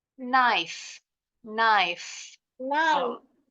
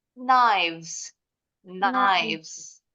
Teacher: Yes, kalau lebih dari satu, pita suaranya bergetar huruf V